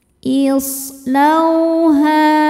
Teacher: Sodnya ini punya sifat yang tidak punya lawan, namanya sofir. Sofir itu artinya berdesis ya, seperti suara angsa.